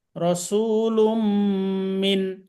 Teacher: নুন সাকিনের বামে মিম আছে, এখানে একটা তাসদিদ ধরতে হবে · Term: গুন্না সহ